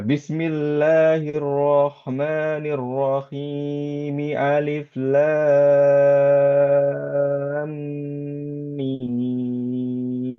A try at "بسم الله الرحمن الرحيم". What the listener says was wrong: mi, hi, mi itu dua harokat aja. Bismillahirrahmanirrahim. Hi, mi, alif gitu ya. Jangan hi, mi, alif. Itu kepanjangan.